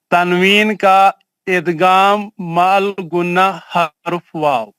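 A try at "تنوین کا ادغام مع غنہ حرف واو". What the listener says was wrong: ماشاء اللہ very good.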